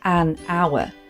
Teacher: it sounds as though it's beginning with a vowel sound so we would say an hour we wouldn't say a hour